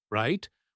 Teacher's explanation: used it with a falling tone, right? Which shows agreement and understanding, not a question.